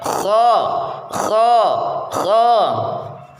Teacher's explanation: lidah bagian belakang naik ke langit-langit atau disebut istilla sedang ujung lidah bagian depan tetap merendah infitah